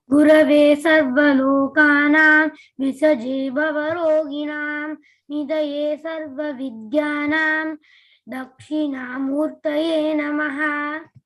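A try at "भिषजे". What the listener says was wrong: Okay, just a note about that. Bishaje, not Bisaje. Bishaje.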